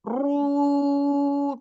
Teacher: Ru coba ru pertama ee pangkal lidah naik ya, Bunda ya. Belakang pangkal lidah naik kemudian ee panjangnya madnya itu ee pangkal lidah turun. Kemudian di ro yang disukunkan terakhir ee pangkal lidah naik lagi.